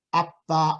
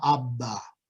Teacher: Then voicing starts immediately when you release the lips, and this is the voiceless stop, where there is a delay before the voicing begins. And see, both of these can be heard easily by the brain.